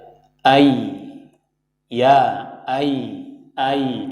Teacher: Kita rasakan tengah lidah kita ya naik.